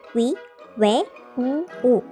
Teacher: 동그라미 원, 입술 순, 입술이 동그랗게 되는 모음이란 뜻이겠죠? 다시 말해 원순모음은 둥글 원의 입술 순, 둥근 입술 모양으로 발음하는 모음을 말합니다. 입술이 원이 된다고 생각하면 쉬워요.